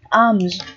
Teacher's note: chữ S đứng sau chữ M, cho nên nó được phát âm là âm Z